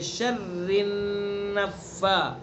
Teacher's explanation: وَمِن شَرِّ میں جو پر سمجھا دیا اخفا ہوگا، را کو باریک پڑھیں گے اور را کو نون میں آگے ملائیں گے. شر النفا، اس طرح ملائیں گے کہ نون کے اندر غنہ بھی کریں گے.